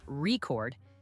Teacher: if you stress the first part reord it's a noun but if you stress the second part record it's a verb